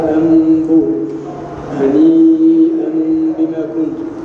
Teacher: أن النون الساكنة والتنوين ينقلبان ميما إذا لقيتهما باء